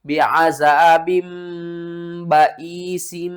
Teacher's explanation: با دو زیر بن کو آپ نے با دو زیر بم میں بدل کر پڑھنا ہے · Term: اقلاب